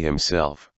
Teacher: The word that is accented on the second syllable is himself.